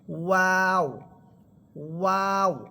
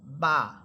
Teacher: দুই ঠোট গোল করে হবে ওয়াও। আর দুই ঠোটের ভিজা অংশ থেকে আসবে বা।